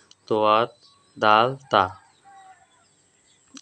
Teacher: জিহ্বার আগা সামনের উপরে দুইটি দাঁতের সঙ্গে লাগাইয়া তোয়া দাল তা